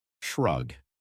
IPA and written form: ʃrʌg (shrug)